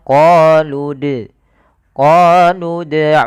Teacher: dia memantulkan tanpa ada huruf hamzahnya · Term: qalqala